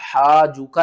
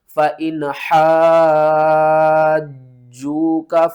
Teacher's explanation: یہاں پر دیکھیں، ہا الف جیم مد زبر حا، جیم واو پیش جو کاف زبر کا، حاجو کا، حاجو کا نہیں آپ نے پڑھنا، ہا کو 5 الف کے برابر اوپر کی طرف کھینچنا ہے اور پھر جیم کے ساتھ ملانا ہے، جیم کو 2 بار پڑھنا ہے سختی کے ساتھ